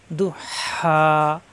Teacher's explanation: ও আক রজা, দত পেশ দু, জিব্বার গোড়ার কিনারা উপরের মারি দাঁতের গোড়ায় লাগিয়ে। দু, হা খারা যাবর হা, মাদের হরফ এক আলিফ টান, কণ্ঠনালীর মাঝখানে চাপ দিয়ে। দু হা, হা আলিফ যাবর হা, মুখ খোলা থাকবে।